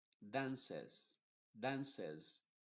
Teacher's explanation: la primera c se pronuncia como una s y la última como una Z inglesa